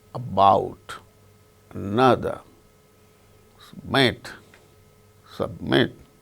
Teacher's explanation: in the case of the word submit, the initial sound between s and b, short and weak